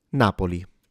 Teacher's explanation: Now we do uh as Italians tend to often times stress the penultimate vowel cluster, but not in this case. Here the stress is at the beginning.